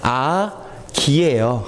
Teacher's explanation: 아기 할 때 기는 전설 모음이고 아는 무슨 모음이죠? 후설 모음이죠.